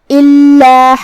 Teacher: کلمت الا میں یہاں لام پہ تشدید ہے. ہم دو حرف کے برابر لام کو پڑھیں گے کیونکہ تشدید کی اصلیت دو حرف ہے · یہاں بھی حکم ہے ادغام بغنہ، تو ہمیں یہ تنوین کو واو میں ملا کے غنہ اور تشدید کے ساتھ یہ حکم کو ادا کرنا ہے. کلمت غساقہ میں یہاں حرف الغین کو ہم حلق کے اوپر والے حصے سے پڑھیں گے اور اسے بھاری آواز میں بھی، کیونکہ غین حروف التفخیم میں سے ہے جو کہ سین پہ تشدید ہے، لہذا تشدید کا دھیان رہے.